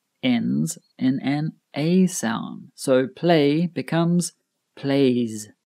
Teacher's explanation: when a word ends in a vowel sound, we also use the voiced Z pronunciation for the final S. For example, play ends in an A sound.